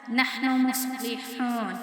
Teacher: صاد کو موٹا پڑھنا ہے اور ہا کو باریک پڑھنا ہے کیونکہ ہا جو ہے نا وہ حرف حلقی میں سے ہے.